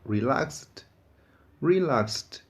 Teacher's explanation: o ED final vai ser pronunciado como t, t